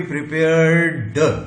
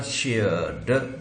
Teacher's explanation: र voiced है इसलिए ये ट नहीं बनेगा, ये ड बनेगा, क्योंकि प्रिपेयर्ड हमारा मुंह ही अलाउ नहीं करता हमको पास्ट टेंस बनाते समय वॉइसलेस के बाद वॉइस साउंड बोलने के लिए।